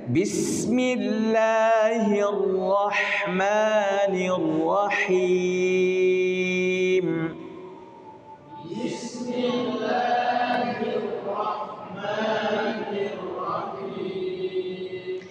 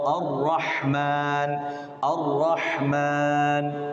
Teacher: Getarannya jelas. Getarannya tidak sampai berkali-kali. Dia hanya sekali. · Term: sifat takrir